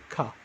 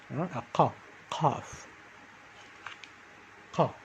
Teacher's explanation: It comes from the upper throat.